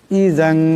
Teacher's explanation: জালের উপর দুই জবরের তনবিন, এরপরে কাফ আসছে, কাফ ইকফার হরফ, এখানে ইকফার এক আলিফ পরিমাণ গুন্না হবে।